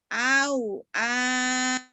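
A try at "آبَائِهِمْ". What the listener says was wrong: Ihin, bukan bihin. Kan itu hamzah Bu, bukan bukan ba ya.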